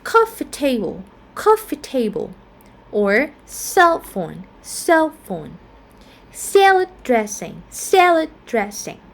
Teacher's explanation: So we are going to like normally stress on the first syllable.